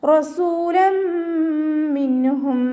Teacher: നൂൻ സാക്കിനയെ വ്യക്തമാക്കി മണിക്കാതെ ഉച്ചരിക്കുക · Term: ഇദ്ഹാറിൻ്റെ